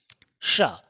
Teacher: इसको कहते हैं मूर्धन्य शा। इसके उच्चारण में जीभ का अगला हिस्सा ऊपर तालु से टच होगा, मूर्धा से